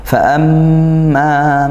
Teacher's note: mim bertasydid dibaca ee ghunah didengungkan ya. Dan ini ghunah yang paling kuat ya. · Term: gunnah